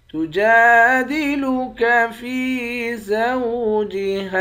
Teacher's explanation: جیم کے بعد الف ہے، اس الف کو ایک الف کی مقدار کھینچ کر پڑھیں گے